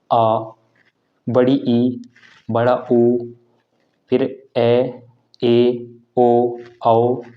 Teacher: में अधिक समय लगता है उन्हें दीर्घ स्वर कहते हैं और इनका उच्चारण दो मात्रा में होता है